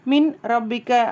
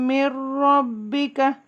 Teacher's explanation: மூக்குல சொல்ல மாட்டோம் நூன் இருக்கும் ஆனா அதை நம்ம மூக்குல சொல்ல மாட்டோம் அந்த ராக்கு வந்து ஷத்தா கொடுத்துருவாங்க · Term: பிலாகுன்னா